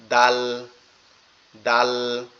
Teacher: জিহ্বার আগা সামনের দুই দাঁতের আগার সঙ্গে, অর্থাৎ দালটা হচ্ছে সামনের দুই দাঁতের গোড়ার সঙ্গে